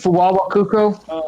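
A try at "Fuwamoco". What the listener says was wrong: Fuwamoko, not Coco. Yeah, Moko.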